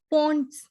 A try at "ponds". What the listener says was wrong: Yeah, so you were about to say pounds. It is not pound, it's pond.